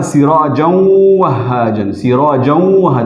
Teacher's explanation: تو اصل میں ہے سراجن وہاجن، تو سراجن میں جو نون جو ہے پوشیدہ لکھا ہوا ہے یا اس میں پوشیدہ ہے، تو وہ نون جو ہے واو سے بدل گیا اور واو کا واو میں ادغام ہوا، ٹھیک ہے. تو اس وجہ سے نون اب نہیں پڑھا جاتا، سراجوں پڑھا جاتا ہے، اور اس طرح اس میں غنہ بھی کیا جاتا ہے. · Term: ادغام مع الغنہ